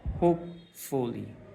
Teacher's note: হুপ এখানে একটা চাপ হয়, আমাদের কণ্ঠের মধ্যে একটু প্রেশার পড়ে